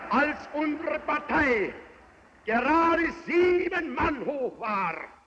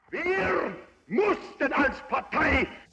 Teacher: On a l'impression qu'il tape sur ses phrases, on a l'impression qu'il cogne ses cordes vocales, on a l'impression que ce sont des mots, à la limite, qui n'existent pas, qui n'ont jamais été prononcés par quelqu'un d'autre.